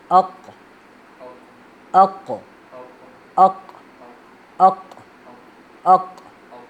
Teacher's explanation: اس کو موٹا پڑھنا ہے اور کاف کی طرف باریک بالکل نہیں پڑھنا